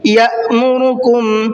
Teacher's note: یأمرکم، یا دیکھیے میں نے یہاں جھٹکے سے پڑھا ہے اس لیے کہ یہاں پر حمزہ ساکن ہے اور حمزہ ساکن کے پڑھنے میں جھٹکا ہوتا ہے۔